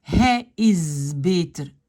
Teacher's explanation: le S devient Z